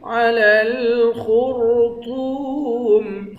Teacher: خا را اور طا تینوں کو موٹا پڑھیں گے، طا کو واو کے ساتھ ملا کر ایک الف کے مقدار کھینچ کر پڑھیں گے، آخر میں میم ساکن ہے۔